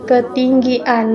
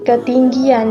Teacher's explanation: pemunculan bunyi y pada kata ketinggian tepian dan penantian